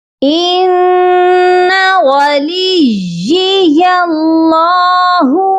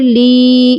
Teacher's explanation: تو اس چیز کا خیال رکھنا ہے کہ یا مشدد ہے، لام کو یا مشدد کے ساتھ سختی سے ملانا ہے